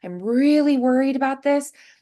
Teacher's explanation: So she's a little bit higher, but you can hear that she's a little bit more anxious